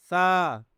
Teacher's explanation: जबान की नोक ऊपर वाले दो दांतों के किनारों पर जब लगती है तो सा की आवाज निकलती है · زبان کی نوک اوپر والے 2 دانتوں کے کناروں پر جب لگتی ہے تو سا کی آواز نکلتی ہے